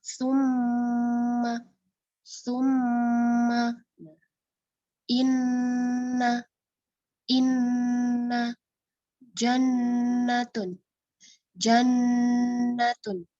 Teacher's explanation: ditekan atau dimasukkan ke rongga hidung kurang lebih 2 harokat atau 2 ketukan. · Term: gunnah asliyah